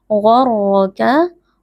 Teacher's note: huruf ghain dan huruf ra, dua-duanya huruf tebal, dibaca dengan mengangkat pangkal lidah.